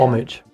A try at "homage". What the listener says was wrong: The H is silent. Homage.